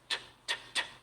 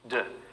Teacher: The only difference between t and d is that the T doesn't use the voice, and the D does use the voice